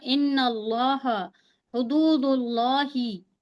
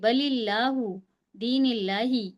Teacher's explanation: लफ्ज अल्लाह से पहले पेश हो जबर हो तो हम मोटा पढ़ेंगे, लफ्ज अल्लाह से पहले अगर जेर है तो हम बारीक पढ़ेंगे